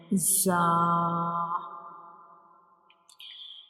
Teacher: It is also called a whistle letter because when we pronounce zah the whistle like sound comes like zah. So when we pronounce zah we will touch up and down teeth together.